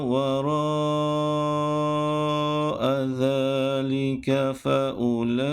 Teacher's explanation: Pada kalimah wara' dan pada kalimah fa'ulaik perlu dibaca dengan kadar panjang 4 atau 5 harakat. Dan tanda ia perlu dibaca dengan kadar panjang, ada tanda mad di atas hurufnya ataupun pada kalimahnya.